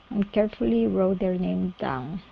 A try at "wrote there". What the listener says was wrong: Okay, instead of rode there, wrote there. Okay, so with your tone, the tone of that O needs to come up right before you get to the TH. Wrote there, wrote. So I'm pushing upwards. Wrote there. Carefully wrote their names down.